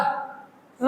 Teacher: तो रा एग्जाम्पल में आएगा हमारा रा, ला हमारा पार्श्व ध्वनि से ला, तो जो पीछे से तुम्हारी पार्श्व ध्वनि लुंठित वर्ण रा, तो हमारा लुंठित वर्ण के कभी की ध्वनि पैदा हो रा बोलो तो वाइब्रेशन जैसे मुंह में लगता है, तो ये हमारा लुंठित व्यंजन हो गया।